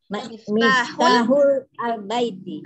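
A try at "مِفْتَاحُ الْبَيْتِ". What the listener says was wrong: Kalau udah masuk ke lam sukun miftahul baiti, nggak perlu miftahul al-baiti, nggak perlu. baiti.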